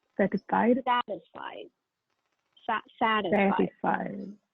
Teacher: The stress should be on the first syllable.